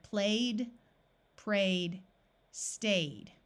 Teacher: the suffix ED sounds like the letter D after all vowel sounds. AY says A, so we have played, prayed, stayed.